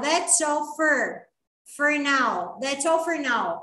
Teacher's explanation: O for, quando o nativo fala, ele vira fur